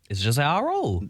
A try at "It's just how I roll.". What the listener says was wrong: No, you got to say it in this same inflection.